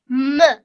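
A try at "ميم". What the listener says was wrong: meme. You have to say the full letter, meme.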